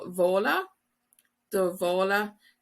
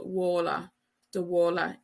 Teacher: V sound in Munster, or do wola. Do wola in Connacht and Ulster.